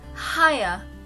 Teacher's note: three vowel sounds are clustered all together to form one sound